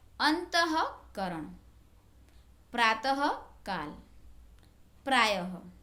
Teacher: जो 2 बिंदी लगाई जाती है ऊपर नीचे अक्षर के बाजू में, उसे विसर्ग कहते हैं। और जो ये विसर्ग है उसका उच्चारण ह किया जाता है।